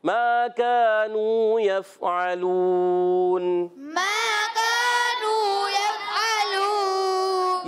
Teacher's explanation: मा का नू तीनों को एक एक अलिफ खींचना है